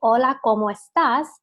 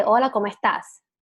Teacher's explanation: we don't really pronounce our s's as much